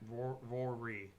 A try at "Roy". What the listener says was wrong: Sounds like he's still saying Rory.